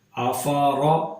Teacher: افرأیت، اس میں را کو غور سے دیکھیں، را پر زبر ہے، جب بھی را پر زبر یا پیش ہو تو را کو موٹا یعنی پر کر کے پڑھتے ہیں